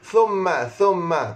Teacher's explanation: Huruf tha, lidah mesti kena keluar sikit nah. Lidah mesti kena keluar sikit, 0.5 cm. · Mim syaddah, hukumnya wajibal gunnah, mesti kena dengung 2 harakat nah.